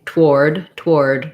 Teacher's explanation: we often say toward toward with basically no vowel there